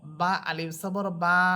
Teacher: জবরের পর খালি আলিফ, যেমন বা আলিফ সবর বা, এক আলিফ টেনে পড়তেছি। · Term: মদ